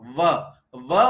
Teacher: व बोलते समय हमारे दांत और ओठ के बीच टकराना होता है। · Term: दंतोष्ठ्य